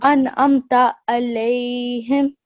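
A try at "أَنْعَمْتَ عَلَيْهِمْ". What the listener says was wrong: Alayhim. Good.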